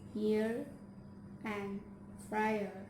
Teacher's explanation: Consonant is y, with the front of the tongue rises toward hard palate without making a contact, or palatal approximant